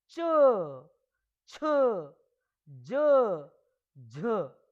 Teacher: पहले जो ध्वनि है मुख के विभिन्न अंगों को स्पर्श करती है और अंत में जो हवा है वो एक जोर के साथ, एक प्रयास के साथ, एक संघर्ष के साथ मुंह से बाहर निकलती है। च, छ, ज, झ, तो इसमें टच भी कर रही है और हमको इनको उच्चारण करते समय हमको जोर भी लगाना पड़ रहा है, संघर्ष भी करना पड़ रहा है। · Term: स्पर्श संघर्षी व्यंजनों